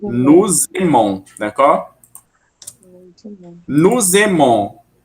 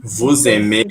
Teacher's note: E como nu, vu e eles ou elas terminam com S, a gente vai juntar com o som de Z.